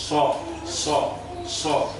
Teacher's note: Itbaq itu artinya lidah itu merapat ke ke bagian atas itu, langit-langit rongga mulut itu. Sehingga ketika kita mengucapkan huruf shad itu kelihatan suara membesar.